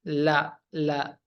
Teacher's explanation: huruf lam sifatnya jahar nafas ditahan